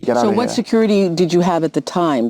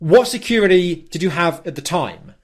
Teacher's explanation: drop the T and turn it into a D